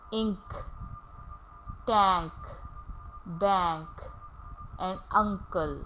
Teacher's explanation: So n is changed into ing and k is changed into k. K sound will remain k sound and n will change into ing. Similarly, in uncle, n is changed into ing and this c, which is pronounced as k, is changed into k. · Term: ing sound